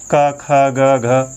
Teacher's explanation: इनके उच्चारण में हमको केवल और केवल स्पर्श करना पड़ता है, संघर्ष ज़्यादा नहीं करना पड़ता है ना। क ख ग घ, कहाँ कोई संघर्ष नहीं है, मतलब स्पर्श मात्र ही है, संघर्ष नहीं है, इसलिए ये स्पर्शी व्यंजन के अंतर्गत आते हैं।